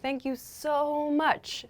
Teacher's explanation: one thing we do when we use so is we often make the o sound really long